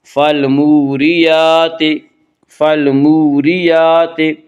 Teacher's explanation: فالموریات فالموریات یا کے اوپر کھڑا زبر ہے، کھڑا زبر کو ایک الف کے برابر کھینچ کر پڑھیں گے